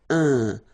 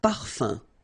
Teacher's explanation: So it's nasal and it's un. So it really goes in your nose. You don't pronounce the M at all.